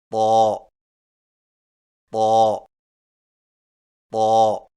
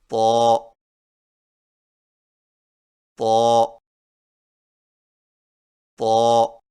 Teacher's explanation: طا کی ادائیگی میں زبان کی نوک کو سامنے والے اوپر کے دو دانتوں کی جڑ سے لگا کر اور زبان کے پچھلے حصے کو تالو کی طرف بلند کرتے ہوئے موٹی آواز میں پڑھیں